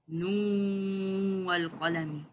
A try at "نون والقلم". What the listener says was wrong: Yeah, but you're not showing the ghunna when there's ghunna, when there's no ghunna.